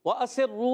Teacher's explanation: وَأَسِرُّوا میں واو کے دائیں کی ہونٹوں کی گولائی سے ہے، یہ الف نہیں حمزہ ہے کیونکہ اس کے اوپر زبر آ گیا ہے۔ وَأَسِرُّوا سین کو باریک رکھیں گے، سیٹی والا حرف ہے۔ وَأَسِرُّوا را مشدد ہے، ذرا رک کر ادا کریں گے، اور واو مدہ ہے، واو ساکن سے پہلے پیش بھی ہے، واو مدہ ہوگا، ایک الف کھینچنا بھی ہے۔